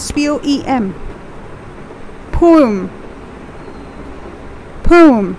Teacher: it's basically a two-syllable word that is po um